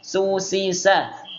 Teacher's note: ada udara yang lewat, nggak ada getaran pada pita suara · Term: hams